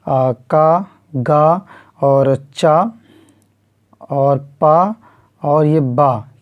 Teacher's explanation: जिन ध्वनियों के उच्चारण में अल्प प्राण वायु जो है प्रयुक्त होती है वो अल्प प्राण जो है ध्वनियाँ कहलाती हैं। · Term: अल्प प्राण ध्वनियाँ